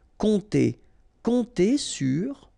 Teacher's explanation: this P is not pronounced, and then O and M together will give you this nasal on